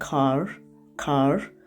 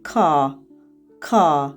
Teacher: uzun a ilə ifadə edirik a və R hərfi birləşmələrini · Amerikanın ingilis dilisində R səsi eşidilir, aydın eşidilə bilir sözlərin sonunda xüsusilə. Amma Britaniya ingilis dilisində R səsi sözün sonunda istifadə olunmur.